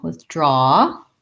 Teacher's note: we have second syllable stress in both withdraw and withdrawal. And we have the ah vowel, withdraw.